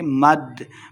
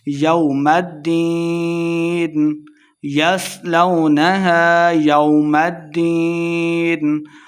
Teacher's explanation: یصلونہا یومد، یومد، یو کو لمبا نہیں کریں گے. مد، میم کو دال کے ساتھ ملا کے پڑھیں گے کیونکہ دال مشدد ہے